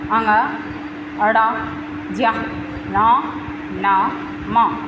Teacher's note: नासिक्य व्यंजन जिनका उच्चारण मुख और नासिका से होता है